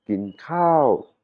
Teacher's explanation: le mot Khao c'est un son montant aigu